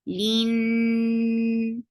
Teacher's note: Lean for kasra give e sound, attached with noon. Noon will get sifa of gunna. And this is akmal gunna. So keep the sound in your nose for a longer time. Lean. And then it is 2 counts long.